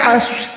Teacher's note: عین صاد زبر عص. عین حلق کے درمیان سے، صاد موٹا حروف. صاد کا ادائیگی کرتے ہوئے منہ کو گولائی کریں.